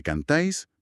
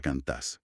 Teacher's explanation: un diptongo, que no es más que dos vocales pronunciadas juntas en una misma sílaba, se funde y se comprime en una sola vocal con el paso del tiempo y el uso diario. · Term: monoptonga